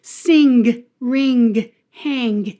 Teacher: people do pronounce the G. They pronounce the G.